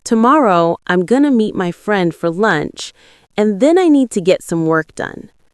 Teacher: Stress tomorrow, meet, friend, lunch, and work. The other word should be softer and faster. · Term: natural rhythm, natural rhythm of English